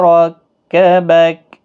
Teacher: را زبر کی وجہ سے پر پڑھا جائے گا